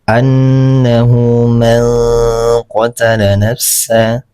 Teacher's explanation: Didengungkan. Kemudian nunnya disamarkan ditahan selama dua harakat. Annahu manqala nafsa man ini disamarkan manqada nafsa. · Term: ikhfa hakiki